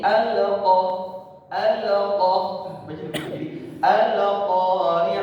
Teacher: ada yang lamnya itu dipantulkan lamnya itu diqalqalah diqal jadi alqoh alqoh alqah nah ini salah ini salah kenapa